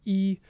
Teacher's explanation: And these dimensions correspond roughly to the position of the tongue in the mouth, specifically the position of the highest point in the tongue and the mouth. So when you're making a high front vowel like E, your tongue's up high and forward in the mouth.